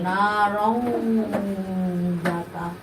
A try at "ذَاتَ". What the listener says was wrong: জাতা, তুমি এই যে মাদগুলো মিস করে যাচ্ছে, মাদের সামনে থেকে সরে দাও।